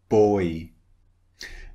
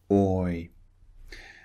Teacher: at the shape of my mouth and notice how it changes it starts round and it finishes slightly wide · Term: oi